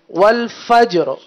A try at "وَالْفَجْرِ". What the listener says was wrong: فجر، را بھی ظاہر کریں.